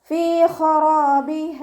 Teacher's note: റോ ഫതഹ ആയതുകൊണ്ട് നമ്മൾ ഉയർത്തിയിട്ട് ഉച്ചരിച്ച് കൊടുക്കുക കേട്ടോ. അലിഫ് മദും കൂടെ വന്നിട്ടുണ്ട്. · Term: ഉയർത്തി ഉച്ചരിക്കേണ്ട